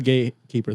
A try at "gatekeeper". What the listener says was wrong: didn't say gates fully when you said it.